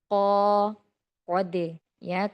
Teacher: Qaf memiliki atribut isti'la tetapi munfatih, artinya terbuka, tidak terlalu berat